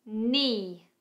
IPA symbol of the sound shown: ni: